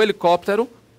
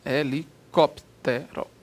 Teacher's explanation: Proparoxítono, a sílaba tônica é antepenúltima, acento obrigatório.